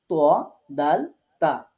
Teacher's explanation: জিহ্বার আগা সামনের উপরের দুই দাঁতের গোড়ার সাথে লাগিয়ে ত, দাল, তা, কেমন করে উচ্চারণ করতে হবে, শক্ত করে।